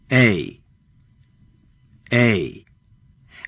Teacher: example chances are you are pulling your lips wide instead just arch the middle of the tongue from a low wide position in the mouth to a higher position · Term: diphthong, A diphthong